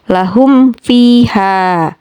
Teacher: Di sana, mim sukun bertemu dengan huruf fa. Selain huruf mim dan ba, mim mati juga terbaca dengan jelas. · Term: izhar syafawi